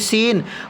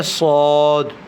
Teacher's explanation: اس کی باریک ہوگی سین، اور یہ موٹا کر کے پڑھیں گے صاد